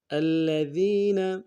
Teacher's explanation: الذین، حمزہ کو لام کے سامنے لانا ہے، لام کے اوپر تشدید زور دیں گے، اگلے لام کو نون سے ادا کریں گے، ذال کو یا کے سامنے لانا ہے، یا مدہ، ذال کو باریک ادا کرتے ہوئے ایک الف دال میں کھینچیں گے، یا مدہ کو، نون کو نون سے ادا کریں گے۔